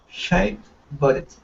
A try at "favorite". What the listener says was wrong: Nope. You're saying favor. Okay, we don't add an extra vowel sound, so we remove it. So it's favorite. Favorite.